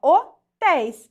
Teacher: Qual que é a sílaba que tá sendo acentuada é a última sílaba né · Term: oxítona